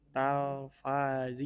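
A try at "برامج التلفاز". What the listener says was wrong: Oh, bukan tal itu til. Tilfazi.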